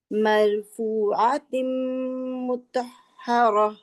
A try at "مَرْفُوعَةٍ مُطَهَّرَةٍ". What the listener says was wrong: را بھی موٹا، قا بھی موٹا. مرفوعۃ مطہرہ.